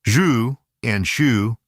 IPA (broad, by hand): ʒ and ʃ